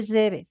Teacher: tienen esa pronunciación de la doble L aún, no la mezclan con la Y. Y aún así no en todas las personas. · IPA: [ʎ]